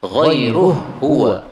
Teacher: Kalau dibaca ghairuhu, maka pada qiraah Abu Amr, ha ketemu ha itu bisa idgham. Berarti ghairuhu huwa. · Ha ketemu ha menjadi idgham